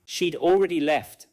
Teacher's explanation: She'd already left may contain a tiny D sound that is difficult to hear. The word is present grammatically, but it may not be strongly pronounced.